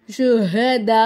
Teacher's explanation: இதை வந்து அஞ்சு அலிஃப்க்கு நம்ம நீட்டணும்